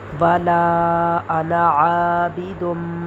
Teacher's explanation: دال میم دو پیش، دم، عابدم. تنوین کے بعد میم آیا ہے تو یہاں ہم غنہ کر کے پڑھیں گے